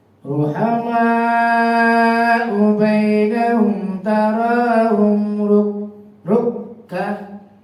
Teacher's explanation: Kafnya ada tasdid, double bacanya.